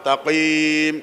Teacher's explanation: Qim, tanya tipis, qafnya tebal.